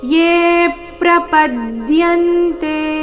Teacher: ಎ ದೀರ್ಘ ಹೇಳಿ ಆಘಾತ ತಗೊಳ್ಬೇಕು ಮುಂದೆ ಪ್ರ ಸಂಯುಕ್ತ ಅಕ್ಷರ ಬಂದ ಕಾರಣ